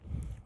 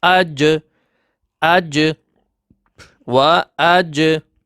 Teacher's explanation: When these 5 letter has sukun, so jim has sukun. When we will connect hamza with jim, voice will be bounced. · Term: qalqala